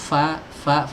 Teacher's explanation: huruf fa keluar dari ujung gigi seri atas bertemu dengan perut bibir bawah.